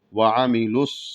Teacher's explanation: عین کو حلق سے ادا کریں گے اور میم کے زیر کو واضح کریں گے اور لام کو صاد میں ملائیں گے